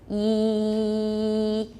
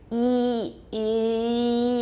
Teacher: So to get that high F2 that we need for E, we're using our tongue, getting really close to the front of our mouth.